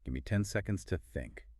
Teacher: It's polite but assertive, usually falling slightly at the end.